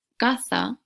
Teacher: en vez de distinguir entre casa y y caza como lo hacen en Madrid dicen caza para los dos